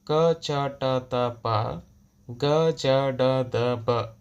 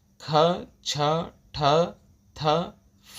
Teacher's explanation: ಕಡಿಮೆ ಉಸಿರು ಕೊಟ್ಟು ಉಚ್ಚರಿಸುವ ವ್ಯಂಜನಗಳು ಅಲ್ಪಪ್ರಾಣಾಕ್ಷರಗಳು ಹೆಚ್ಚು ಉಸಿರು ಕೊಟ್ಟು ಉಚ್ಚಾರ ಮಾಡುವ ವ್ಯಂಜನಗಳು ಮಹಾಪ್ರಾಣಾಕ್ಷರಗಳು